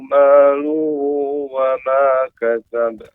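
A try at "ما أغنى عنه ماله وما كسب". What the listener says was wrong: Oke, masih kurang ya huruf panjangnya. Coba ma-nya itu dipanjangkan lagi insya Allah. Jadi temponya dipanjangin. Ma'aun, baru masuk ke A. Jangan ma'aun, jangan. Tapi atau kita ketuk Pak meja. Ma'auna. Dan huruf wa juga dibulatkan mulut, tidak dipanjangkan, dialirkan suara.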